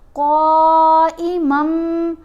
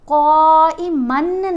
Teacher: جب بھی نون ساکن یا نون تنوین کے بعد حرف با آ جائے تو آپ نے نون کی آواز کو میم کی آواز میں بدل کر پڑھنا ہے. اگر آپ پڑھتے ہیں نا قائمن، من نون ہے نا، اس نون کو آپ نے میم میں بدلنا ہے. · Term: اقلاب